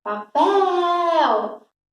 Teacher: A sílaba que mais se estendeu foi o pel. Então, eu sei que a sílaba forte é esta daqui, que, portanto, é a última, tá? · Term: sílaba tônica